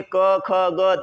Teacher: और स्पर्श व्यंजन क्यों कहा जाता है, क्योंकि ये क वाली जितनी भी लाइन है, इस क वर्ग को बोलते वक्त जो हमारा आवाज निकलती है वो कंठ से निकलती है।